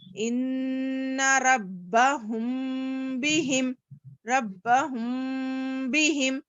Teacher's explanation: اخفاء شفوی کے معنی جب میم ساکن کے بعد با آئے تو اس صورت میں میم کی آواز کو ناک میں تھوڑا چھپا کر پڑھیں گے